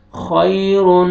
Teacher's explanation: देखिए नून मुशद्दद है, गुन्ना करेंगे और इदगाम हो रहा है यहाँ पे